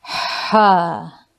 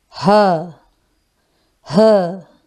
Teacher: Ha is pronounced with the middle part of the throat. Ha. While H is pronounced with the lower part of the throat.